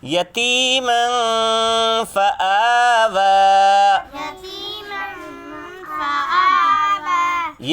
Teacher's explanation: اس دو زبر کی تنوین کا اخفا کریں گے. تنوین کی آواز کو بالکل چھپا ڈالیں گے، ظاہر نہیں ہونے دیں گے.